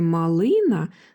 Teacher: склад му саме його Ми чуємо голосніше коли вимовляємо це слово у слові малина наголос ставиться на другий склад ли